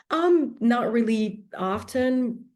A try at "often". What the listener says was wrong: Candidate pronounces often with the t. Now, there is a bit of a debate about whether you should pronounce often with a t or without a t. I, growing up, used to pronounce it with a t, and then I stopped, and now I'm somewhere in between. Often, fine. Often, fine.